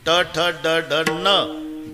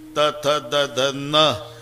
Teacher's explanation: ट ठ ड ढ न, दाताशी संबंध नाही. त थ द ध न, दाताशिवाय उच्चार नाही.